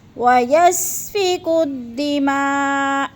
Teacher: وقف کی صورت میں حمزہ کو ساکن کر کے پڑھیں گے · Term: حمزہ ساکنہ